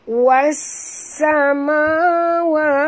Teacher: Safir itu maknanya angin yang berdesir seperti bunyi belalang ya.